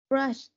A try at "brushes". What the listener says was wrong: Từ này đọc sao? Từ này không phải brush mà đọc có es, mình đọc là gì? brushes đúng không? He brushes. He always brushes. Từ đấy là brushes tại vì có es đúng không? Mình không thể đọc là brush không thôi được.